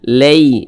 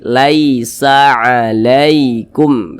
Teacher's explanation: jadi dibaca lunak ya dilunakkan ya Mudah saja jangan sampai condong ke e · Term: huruf Lin